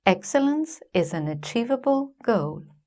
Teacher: The key words are: 'excellence', 'achievable', and 'goal', so they are stressed. The grammatical words are: 'is' and 'an', so they are unstressed. And each multi-syllable word also has its own stress pattern.